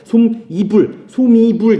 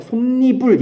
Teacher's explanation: 니은이 첨가가 되어서 덧나게 되죠. 그래서 솜이불 이렇게 얘기 안 하고 솜니불 이런 식으로 얘기를 하게 되는 겁니다. 니은 첨가가 일어나는 가장 대표적인 예예요.